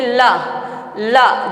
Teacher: जब हम ला बोलते हैं ना तो जीभ दांत के थोड़ा पहले ही रुक जा रही है, लेकिन पूरी तरह से स्पर्श नहीं कर रही है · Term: अंतस्थ